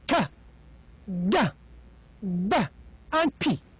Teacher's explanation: the articulators involved in pronouncing them make a complete closure. They are stopped. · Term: stop sounds